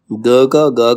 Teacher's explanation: ग का सघोष अल्प प्राण